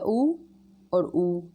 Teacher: दोनों होठ के गोल होने से उच्चारित हो रहा है